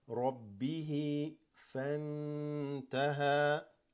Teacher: Noon is slightly hidden, sukoon followed by ta, that's ikhfa.